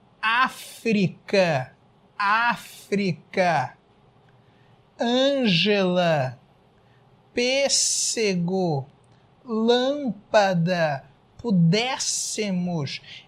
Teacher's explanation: Em todas essas palavras que estão aparecendo aí na tela, você vai reparar que a sílaba tônica, a sílaba mais forte é a antepenúltima